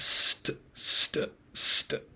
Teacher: if it follows an S, it becomes unaspirated. Um, so more of a st sound.